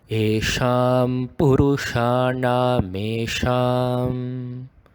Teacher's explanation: The S has a full stop below, so it is actually being produced as a retroflex.